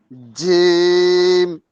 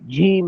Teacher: বাতাস বের করা যাবে না। এটা হামসের হরফ না, বাতাস বের হওয়ার হরফ না। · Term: শক্ত হরফ জিম